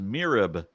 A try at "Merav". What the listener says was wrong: Yeah, Merav and Michal. Pronouncing an E as I is it, like, I mean, maybe it's more common in English, but like when you have it transliterations, it's never going to be I.